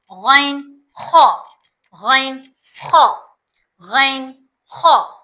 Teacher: हलक का मुंह की तरफ वाले हिस्से से अदा होता है।